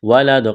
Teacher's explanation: قلقلہ کریں گے دال پر